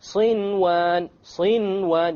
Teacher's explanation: Without any ghunna, you make the noon clear and you move on. Why? Because it's in one word. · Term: idhar